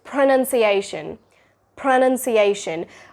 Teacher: While your lips are doing that p sound, your tongue is also raising upward and it's curling upwards to pronounce the r sound.